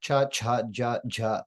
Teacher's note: the palatal sounds are voiced from the back of the hard palate with the top of the tongue